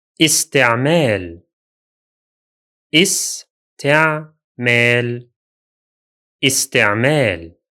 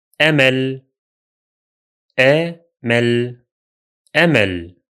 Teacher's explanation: In both words, the Hamza sound is pronounced. The difference is that it carries a kasra vowel in the first word and a fatha vowel in the second.